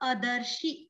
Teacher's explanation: रेफ और शकार के बीच में एक हल्के से स्वर का आगम हुआ है, वो हमें दिखलाई नहीं दे रहा है, हल्का सा स्वर है, अदर्शी अदर्शी। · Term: स्वर भक्ति